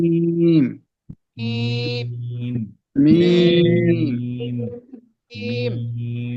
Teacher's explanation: ঠোঁট গুলা চাপ দেন, চাপ দিয়ে হালকা হবে মিম, একদম জোরে না,